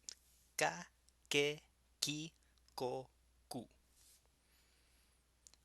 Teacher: And you'll notice with the ga that in Esperanto it's normally advised to leave off that little breath off. It's called aspiration.